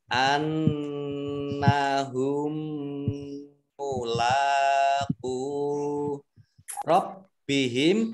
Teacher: mim sukun bertemu dengan huruf mim idgham mimi, ditandai di sini ada mim tasdid, mimnya langsung ini mimnya double, ditahan 2 harokat, lam fathah berdiri, mat tabi'i, qaf domah wawu sukun mat tabi'i, masing-masing dibaca 2 harokat ya.